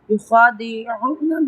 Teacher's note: خواہ پہ ہم تفخیم کریں گے اور اس کو ہم لمبا بھی کریں گے کیونکہ اس کے پاس زبر ہے